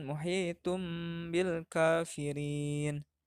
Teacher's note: tanwin beralih menjadi em menghadapi huruf iklab yaitu ba